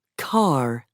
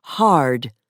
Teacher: Most Americans also pronounce the R at the end of words, for example, car, and before a consonant, for example, hard